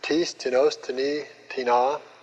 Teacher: the accent is always on the first syllable in uh interrogative